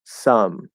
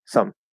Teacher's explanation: if you say it quickly and more lazily, it will become a schwa sound. So instead of saying some, if I say some, it's just a schwa.